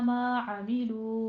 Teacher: ما عملو میں عین وسط حلق سے ادا کرتے ہوئے واو مدہ کو دونوں ہونٹوں کو گول کرتے ہوئے ادا کرنا ہے